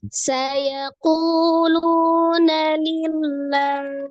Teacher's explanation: alif lam jalalah yang melekat pada lafaz Allah sebelumnya berharakat kasrah, maka dibaca tipis ya, tarqiq lamnya lillah